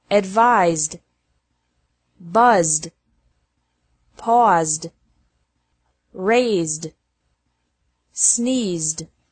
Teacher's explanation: ED is pronounced like D after verbs ending with a Z sound